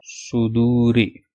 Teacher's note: Musa, and it's swad dhamma su, dal waw dhamma du, sudu, ra kasra ri, suduri, suduri. And only one sound will be stretched, that do sound because of waw madda